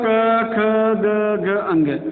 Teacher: अ या आ, कु वर्ग क ख ग घ ह और विसर्ग, इनका उच्चारण स्थान क्या है, कंठ